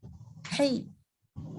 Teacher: Harus diingat, jangan hi tapi hai. Naik ke atas tengah-tengah tenggorokan. Hai. Jadi jangan dibaca dengan jadi wasubhi.